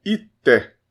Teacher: Esse primeiro i a gente vai falar normal, sem nasal.